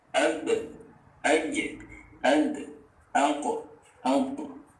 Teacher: cara membaca qalqalah adalah dengan memantulkan dan mengembalikannya ke harokat fathah.